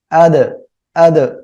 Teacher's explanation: হামজা দাল জবর আদ, দাল কলকলার অক্ষর সাকিন অবস্থায় আছে, আমরা ধাক্কা দিয়ে পড়বো, ঠিক আছে। আদ, আদ, এভাবে পড়বো।